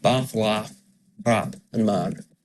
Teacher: the vowels in bath and laugh are the same as the vowels in trap and man. So quite often they're different for other accents, but in this accent they're the same.